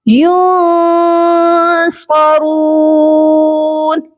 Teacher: نون ساکن ہے اور اس کے بعد ہے صاد جو کہ حروف اخفا ہے. یہاں پر بھی ہم اپنی آواز کو ناک میں چھپا کر پڑھیں گے، اخفا کریں گے.